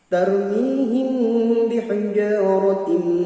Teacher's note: tanwin kasrah bertemu mim yaitu idgham bi gunnah